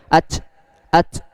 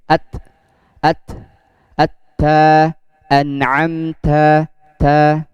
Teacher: untuk huruf ta keluar nafasnya sedikit dan gak terlalu banyak